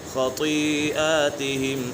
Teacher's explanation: خطی خا بھی پورا تو بھی پورا، خطیئاتہم خطیئاتہم، یہاں پر مد متصل ہے اور مد کے بعد حمزہ اسی کلمے میں تو اسی وجہ سے مد متصل ہوگا۔